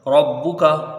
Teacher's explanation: را کو با سے جب ملائیں گے تو یہاں با میں کچھ قلقلہ ہوگا، مطلب ایک سختی رہے گی، اور را کے اوپر زبر ہے اس لیے اس کو پر پڑھا جائے گا